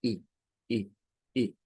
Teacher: Pero cuando veamos una I mayúscula en un fonema, es un sonido más corto, es un sonido I, I, I. Es un sonido entre una I y una E, digamos, casi por ahí anda, entre una I y una E. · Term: I corta